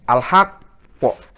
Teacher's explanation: Jadi ditahan dulu beberapa detik, menyempurnakan tasdid, baru dilepaskan qalqalah. Al-haqqo gitu. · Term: qalqalah akbar